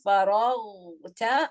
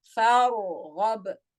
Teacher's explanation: when I'm saying فَرَغْتَ, my sound is running on the ghain compared to فَارْغَبْ, it's partial running.